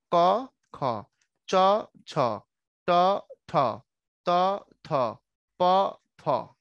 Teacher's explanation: বর্গের এই প্রথম দুইটা বর্ণ এদের পরিচয় হচ্ছে এরা অঘোষ